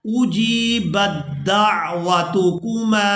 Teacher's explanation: یہاں پر ہم نے با کو دال مشدد کے ساتھ ملانا ہے. تا کو یہاں پر ہم نے چھوڑ دینا ہے. تا کو اس وجہ سے ہم نے چھوڑ دینا ہے کیونکہ یہاں پہلے ساکن تا ہے اور اس کے بعد حرف جو ہے وہ مشدد آ گیا ہے تو ساکن حرف کو ہم نے چھوڑ دینا ہے.